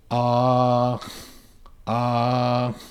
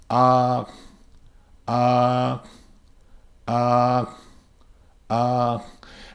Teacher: you hear ah the whole time. You don't hear a change in the ah at the end.